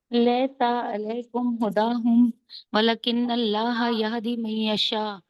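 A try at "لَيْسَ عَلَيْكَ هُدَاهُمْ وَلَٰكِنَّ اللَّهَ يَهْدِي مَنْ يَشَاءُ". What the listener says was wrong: अलैका है, अलैकुम नहीं है।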